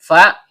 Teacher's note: huruf bibir, yaitu perut bibir bawah bertemu dengan ujung gigi seri atas